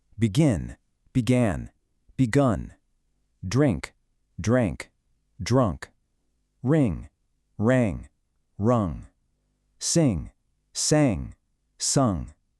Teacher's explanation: Notice the vowel shifts here, the short i, the wide a, and the hard u.